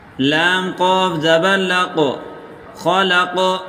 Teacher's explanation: اگلا حرف خا زبر خو، لام قاف زبر لق، قاف کو موٹا کریں اور قاف پر قلقلہ بھی کریں